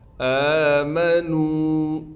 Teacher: حمزہ پر کڑا زبر ہونے کی وجہ سے حمزہ کو کھینچیں گے